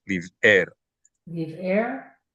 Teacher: That's called a glottal stop. So we need to be careful not to say liver, but live air with a break.